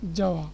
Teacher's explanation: এখানে অস্ফুট একটা ব যেন বা ওয়ার মতো একটা জিনিস এখানে মাঝখানে কিন্তু চলে আসছে, যাওয়া ওয়ার মতো একটা জিনিস, যেখানে বয়ের অস্ফুট ব বা সেটাকে বলা যায় উয়া।